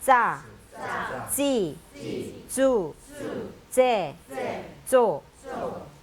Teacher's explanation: 자, 그 다음에 요 짜자는 이빨에 혀가 붙었다가 떨어지면서 바람이 새는 소리가 나는 짜, 찌, 주, 제, 조. 전부 다 바람 새는 소리가 나야 됩니다. 이빨 뒤에 붙었다가 떨어져야 됩니다.